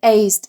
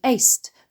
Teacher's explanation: the z and s are made in the same place in the mouth, but the former is voiced, while the latter is unvoiced